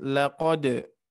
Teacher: hati-hati di sini ada huruf qalqalah dipantulkan dengan pantulan yang ringan. Laqad, tidak berat ya.